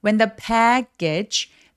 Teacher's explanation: h는 잘 발음을 안 한다. 그래서 when더라고 그냥 H 없이 발음하시면 되겠습니다.